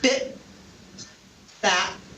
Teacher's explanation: the unreleased t which occurs at the end of a word